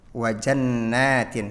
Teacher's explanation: harusnya nun gunnah dan nunnya juga panjang 2 harokat.